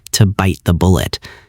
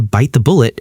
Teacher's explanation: We execute what is called a held T. You prepare your tongue for the T in bite, but immediately transition into the th sound without releasing the breath.